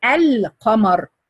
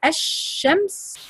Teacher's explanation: We call it لام قمرية because if you say القمر you have to pronounce the لام. But if you say الشمس you don't pronounce the لام